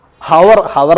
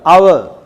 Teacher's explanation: പക്ഷെ ഒരുപാട് സെൻറ്റൻസുകളിൽ അവർ, HOUR, നമ്മുടെ പ്രൊനൗൺസിയേഷൻ എങ്ങനെ? ഹവർ, ഹവർ എന്ന് പറയില്ല, അവർ, ഔ എന്നാണ് ഉച്ചാരണം